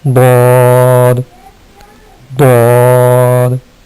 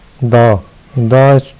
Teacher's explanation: یہ موٹا کر جب کریں گے تو ضاد بن جائے گا، اور جب اس کو باریک پڑھیں گے تو وہ دال بنے گا۔ اس کو اس طریقے سے پڑھیں گے، ضاد، ضاد۔ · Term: ضاد موٹا کر کے